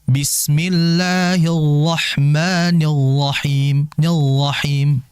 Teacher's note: Ya, dengan istilah hasramatu ar-ra, yaitu apa? Membaca huruf ra tapi seakan-akan nggak ada getaran · Nah, huruf ra ini adalah huruf yang keluar dari ujung lidah. Di antara kesalahan yang terjadi adalah getarannya itu hilang.